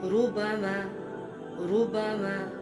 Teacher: را کے اوپر پیش آ گئی تو اس صورت میں بھی را موٹی پڑی جائے گی